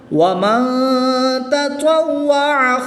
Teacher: نون ساکن کے بعد تا حروف اخفا میں سے ہے تو یہاں پر اخفا ہوگا یعنی غنہ کر کے پڑھیں گے۔ اب تا اور طا کی ادائیگی کا خاص خیال کریں گے، تا کو باریک پڑھنا ہے کیونکہ یہ حروف مستفلہ میں سے ہے، اور طا حروف مستعلیہ میں سے ہے، اور حروف مستعلیہ ہر حالت میں پر یعنی موٹے پڑھ جاتے ہیں تو اس کو پر یعنی موٹا پڑھیں گے۔